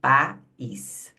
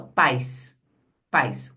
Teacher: quando eu falo pais, vê que é uma única abertura de boca, porque é o único movimento